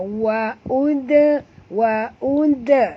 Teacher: dal mati di tengah-tengah, kena lantunkan dia dengan lantunan kecil, qalqalah surah.